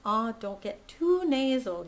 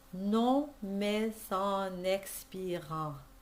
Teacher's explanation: don't get too nasal. You need to have an ah sound in it. If you sacrifice too much of the ah, it'll get too edgy and nasal.